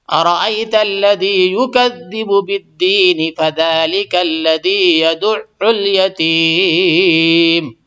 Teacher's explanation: تو یہاں پہ دین پہ مد نہیں ہوگی، تو یہ مد وقفی عارضی ہوتی ہے، اور جب وقف کریں گے تو مد آ جائے گی، مد کر سکتے ہیں۔